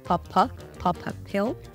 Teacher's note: between the words pop and pill, there is the schwa sound